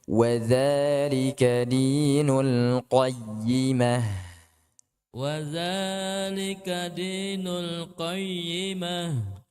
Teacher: Naam, za dua harakat saja, jangan lebih.